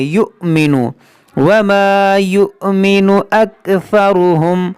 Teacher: حمزہ ساکنہ ہے تو حمزہ کو جھٹکا دے کر پڑھیں گے